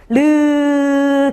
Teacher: 혀를 입 천장에 대고 흘려 보내면서 내는 소리야. 르 계속 흐르는 소리라고 보시면 돼요.